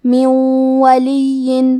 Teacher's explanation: کلمت ولی کے آخری میں یا پہ تشدید ہے، تو ہمیں 2 حرف کے برابر یا کو پڑھنا ہے · دونہ من، کلمت من کے آخری میں نون ساکن ہے، پھر حرف الواو ہے، واو حروف الادغام بغنہ میں سے ہے، تو ہم یہ حکم کو غنہ اور تشدید کے ساتھ ادا کریں گے